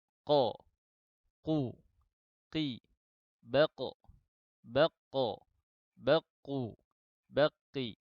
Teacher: kita lanjut ke huruf pangkal lidah yang bertemu dengan langit-langit lunak, yaitu huruf qaf